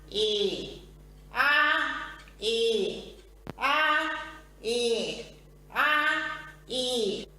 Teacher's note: Sobre todo con la vocal A se observa una marcada nasalidad. Es como si estuviese acatarrada.